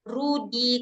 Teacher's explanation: Kalau ro kita tuh R-nya lebih banyak ya getarannya kan. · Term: ro Indonesia